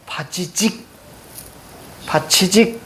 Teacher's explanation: 공기의 흐름을 막았다가 조금만 틈을 열어서 마찰를 일으켜내는 마찰음과 파열음에 성질이 있는 소리입니다.